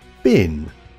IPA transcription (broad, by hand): bɪn